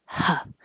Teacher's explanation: the American H doesn't have any sound, any voicing like or any way you might make it. It's just air, like a sigh.